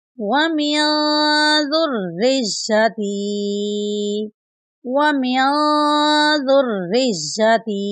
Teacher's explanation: और यहाँ पर या साकिन है, या साकिन से पहले ता के नीचे ज़ेर है, तो ये या मद्दा की मिसाल है। इसको एक अलिफ की मिकदार के बराबर लंबा करके पढ़ेंगे।